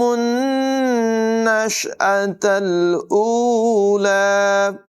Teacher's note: نون مشدد ہے، یہاں پر غنہ بھی کریں گے